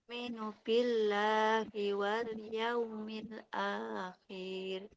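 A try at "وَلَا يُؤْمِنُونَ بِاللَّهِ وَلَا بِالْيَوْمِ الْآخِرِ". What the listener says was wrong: Koknya nggak boleh panjang. Kasra tidak bertemu ya. Nah, nunnya nggak panjang ya.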